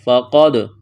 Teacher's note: قرح، اخفا کریں گے، فقد، قاف کو موٹا کرنا ہے، دال ساکن ہے، قلقلہ کریں گے دال پر